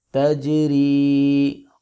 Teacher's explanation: تا زبر جیم تج، را زیر یاری، تجری. را کو باریک پڑھیں گے کیونکہ اس کے نیچے زیر ہے